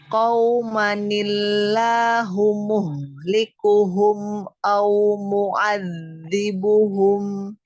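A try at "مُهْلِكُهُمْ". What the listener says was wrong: Lagi li-nya jangan li. Muhlikuhum.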